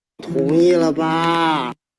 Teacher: So the ba should have a low target, but now it has a high target because the high-low boundary tone has dragged it up.